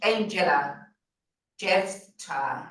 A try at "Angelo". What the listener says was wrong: No, it's Angelo. I don't know if my name is appearing Angela, but it's an O at the end.